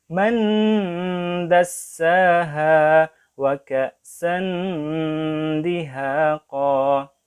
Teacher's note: nun dan dal, dan dia memiliki tempat atau makhraj yang sama